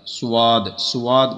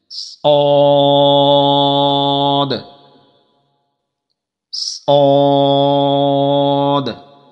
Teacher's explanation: واؤ کی آواز نہیں آنی چاہیے